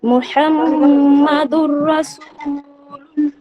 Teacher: এখানে লাম মুসাদ্দাদের পূর্বে যেহেতু পেশ আছে, তাই এখানে পুর করে পড়তে হবে, অর্থাৎ এখানে ল পড়তে হবে।